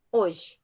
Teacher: No hoje, ele representa, na gráfica, nas letras, 4 letras. Mas em fonemas, eu não tenho o som do H. Então, vão ser 3 fonemas.